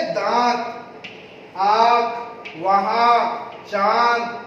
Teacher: उच्चारण की अवस्था में मुख और नाक दोनों से हवा निकलती है, लेकिन नाक से कम और मुख से ज्यादा हवा निकलती है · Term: अनुनासिक